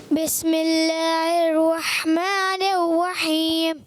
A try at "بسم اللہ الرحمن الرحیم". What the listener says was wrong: ابھی کچھ بہتر ہو مگر تھوڑا آخر میں بعد میں راہ میں ہونٹ گول ہوئے. راہ میں ہونٹ گول نہیں کرنا. جیسے بسم اللہ الرحمن الرحیم نہیں، الرحیم. ہونٹ گول کرتے ہیں. اچھا ہونٹ گول کرنے کی وجہ سے آواز ایسی ہوتی ہے تو ہونٹ گول نہیں کرنے، محنت کرنی ہے اچھے انداز سے.